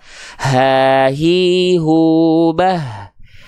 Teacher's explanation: pita suaranya membuka. Maka hak besar punya sifat namanya hams, artinya mengalirkan hembusan angin atau nafas.